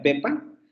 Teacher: Tenemos una E oral normalita, como la que podemos describir ahí, semicerrada anterior no labializada en pepa